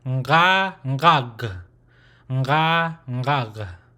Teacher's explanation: it's a nasal sound first, and then a throat guttural sound with the open mouth, right? And there's really no jaw movement. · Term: nasalized version